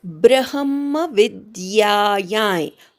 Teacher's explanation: अनुस्वाराचा य, नाकातनं य असा उच्चार करायचा